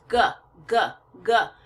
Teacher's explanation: for my mouth and for my throat so g g g mostly in my throat right but my tongue is kind of shoved up to the top of my mouth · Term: voice consonant